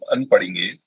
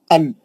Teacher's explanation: नून पढ़ने के वास्ते आपकी जुबान की नोक ऊपर के मसड़ों को टच करती वो नून का मखरज है अन आप वही जबान को पकड़ लीजिए आपको मालूम होगा नून